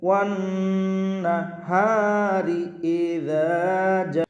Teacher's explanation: ওয়াও নুন জবর ওয়ান, ওয়াজিব গুণনা হবে, নুনের উপর তাসদীদ গুণনা করে পড়বেন